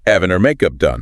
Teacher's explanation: Crucially, in rapid Cockney, that H at the start of having and her would almost certainly be dropped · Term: H dropping